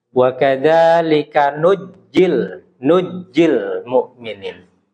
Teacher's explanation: Karena di riwayat yang lain nunnya itu ada yang nggak dipakai begitu. Jadi ditasydidkan saja ke jim.